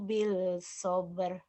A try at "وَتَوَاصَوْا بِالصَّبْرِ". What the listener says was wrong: Watawasau bis, lamnya nggak dibaca kan samsiah.